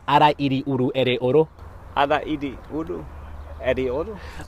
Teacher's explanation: That's called the alveolar flap. And that's made by just flicking your tongue